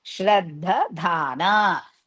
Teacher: First Dha, just simply stress it. Second Dha, Mahaprana.